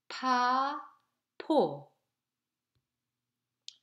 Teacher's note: P sound, which is voiceless aspirate sound. P sound in English word pill, post, pass.